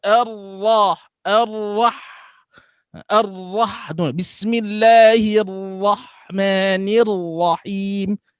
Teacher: Menyempurnakan ulang-ulang ra' serta matikan ha. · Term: takrirur ra'